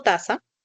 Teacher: La oclusiva dental sorda, la vocal central baja, la fricativa interdental sorda y nuevamente la vocal central baja